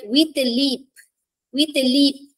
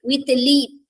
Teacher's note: leap, I'm accenting it, I'm stressing it. With a, I'm not, stressing it. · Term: Anapest